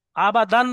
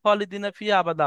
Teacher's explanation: আবাদান বললে হবে না, মিলানোর সময় ওখানে আবাদা পড়তে হবে, এক আলিফ বাদ দিয়ে আলিফ আলিফ মাদ্দা করে পড়তে হবে।